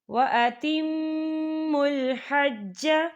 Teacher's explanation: وَأَتِمُّوا الْحَجَّ، یہاں دیکھیں وَأَتِمُّ، یہاں میم مشدد ہے تو یہاں پر غنہ ہوگا